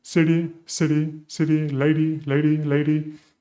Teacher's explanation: And what is going on is that there is a soft and quick touch with the tongue on this rolled area of the palate, right? And there is a flap, there's a vibration or a touch, a one-time touch going on there